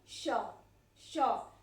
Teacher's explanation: यह जीभ जो है हमारे तालु को टच करता है, ऐसे उठता है और हमारे तालु को टच करता है